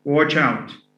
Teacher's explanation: stress falls on the adverbial